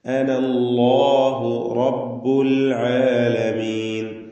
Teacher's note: അല്ലാഹു എന്ന ഇസ്മുൽ ജലാലയിലെ ലാമിനെയും തഫ്ഖീമാണ് ചെയ്യേണ്ടത്, തടിപ്പിച്ചുച്ചരിക്കണം.